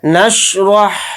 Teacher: را کو یہاں پر موٹا پڑھیں گے یعنی پر